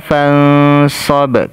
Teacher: nun sukun ketemu huruf Shad ini dibaca ikhfa ya cara membaca Ikfa itu didegungkan dan disamarkan